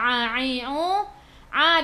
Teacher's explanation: daripada kerongkong, bukan daripada hidung